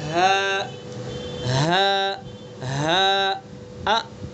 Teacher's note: اقصائے حلق یعنی حلق کا آخری سینے کی طرف والا حصہ، سینے کی طرف سے ادا کریں گے، ہا ہا ہا ا، یہ حمزہ ہوا، ا ا ہا ا ہا ا ہا، تو دونوں کا مخرج ایک ہے، آخری سینے کی طرف سے ادا کریں گے۔ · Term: حمزہ ہا